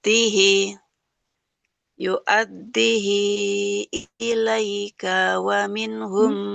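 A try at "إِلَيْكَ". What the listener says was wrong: Kafnya kepanjangan Ibu. Kafnya nggak panjang,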